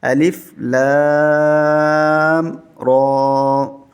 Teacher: لام کو کھینچیں گے، بڑی مد ہے 5 الف تک